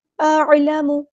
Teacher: حمزہ کی آواز سخت ہوتی ہے اور عین کو نرمی سے ادا کرنا ہے، دونوں کی آواز میں واضح فرق ہونا چاہیے